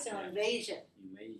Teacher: not stressed on the third syllable. Two. Stressed on the second syllable.